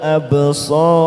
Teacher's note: Huruf ba sukun qalqalah sugro kita pantulkan